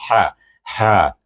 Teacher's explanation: yang tengah bunyinya ha ha ada angin lebih sikit